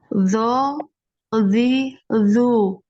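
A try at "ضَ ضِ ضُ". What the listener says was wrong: Lagi, bo, jangan ebo. Ebo. Hati-hati, jangan di depan, ya. Jangan di depan yang ditekan. Jadi tepi lidahnya yang ditekan. Bo. Kalau nanti di depan, ini jadi kedengarannya seperti huruf zo nanti. Zo, ya.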